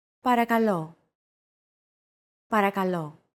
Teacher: make sure to stress that final syllable with the accent mark